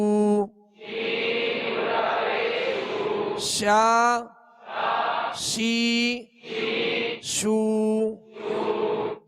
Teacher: شین کو جب ادا کریں گے تو آواز اس کی شین کی آواز منہ میں پھیلتی ہوئی محسوس ہو